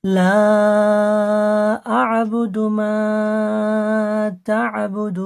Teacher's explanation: আয়াতের শেষে থামলে আপনাকে চার আলিফ টান দিয়ে ছাড়তে হবে।